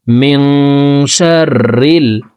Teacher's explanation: নুন সেকেন্ডের পর ইকফার 15টি হরফের ভিতরে একটি হরফ শিন আসছে, এই কারণে এই নুন সেকেন্ডকে নাকের ভিতরে লুকাইয়া গুন্নার সহিত পড়ব। মিং, শিন র জবর শার, র লাম জের রিল, মিং শাররিল। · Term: ইকফা গুন্নাহ